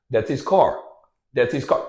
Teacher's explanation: his transforms into is